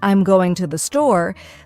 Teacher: the stress naturally falls on going and store the smaller words like I'm and to the r less emphasized and spoken quickly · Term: stress pattern